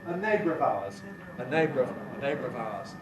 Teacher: Syllabic R compresses to non-syllabic R before a weak vowel.